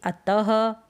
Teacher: कुछ शब्दों में विसर्ग, ये जो दो बिंदी लगी हुई है इस चिन्ह का प्रयोग होता है, जैसे अतः, ह का साउंड आता है, ह की आवाज़ आती है त के बाद में।